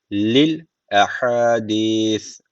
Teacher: Sondaki s harfi peltek. Peltek ve ince.